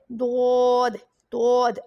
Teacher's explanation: मैं left side की जो ज़ुबान की करवट है उसको यूज़ करती हूँ, ज़ुबान की करवट और उसी साइड की जो दाढ़ों की जड़ है उन दोनों से इसकी अदायगी होती है